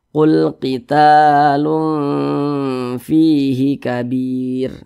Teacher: Maka cara membacanya disamarkan dan juga didengungkan. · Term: ikhfa hakiki